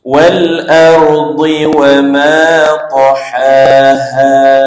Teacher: Wal ardi wama ma dua harakat panjang ta ha yang pertama ni ada bunyi angin sikit suara hamas suara angin ha yang kedua a dua harakat juga juga panjang ha yang kedua tu tidak ada suara anginlah